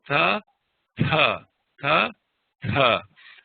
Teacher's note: the dils are actually pronounced with the tongue against the tip of the top row of front teeth so this is makes it a little softer it's a softer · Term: dentals